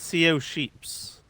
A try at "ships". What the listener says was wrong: You said sheep. There's no sheep.